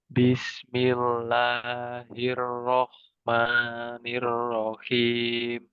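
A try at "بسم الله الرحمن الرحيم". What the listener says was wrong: Kemudian ee panjangnya yang dua harakat dikurangi.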